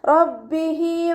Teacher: ഹ വമീറിന് ശേഷം യാ സ്വഗീറയാണ് വന്നിട്ടുള്ളത്. 2 കൗണ്ട് നീട്ടിക്കൊടുക്കുക